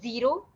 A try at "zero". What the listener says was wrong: So just needs a little bit more clarity with the Z sound. Zero.